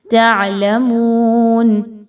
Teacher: میم پیش واو مو، 2 حرکات کے برابر اس کی ادائیگی کو رکھیں گے